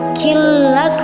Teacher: nun sukun bertemu dengan lam, jadi dibaca bila gunnah tanpa dengung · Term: idgham bila gunnah